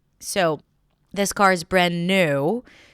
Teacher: Stress on new, last content word of that phrase.